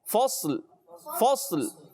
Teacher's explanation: فصل میں پیاری بچی کیا کرنا ہے، ہم نے صاد کو موٹا رکھنا ہے